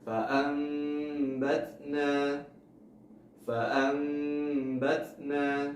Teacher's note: Maka ketika nun sukun atau tanwin bertemu dengan huruf ba, maka nun sukun atau tanwinnya diubah menjadi mim dan ditahan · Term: iqlab